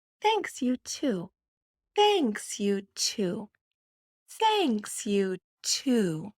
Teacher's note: You notice on two, that vowel oo is long in English and it gets smaller at the end